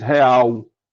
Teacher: A mesma coisa acontece especialmente aqui na pronúncia do Brasil e na pronúncia daqui do Nordeste principalmente, é que o L final o no final de sílaba, geralmente vale por uma semivogal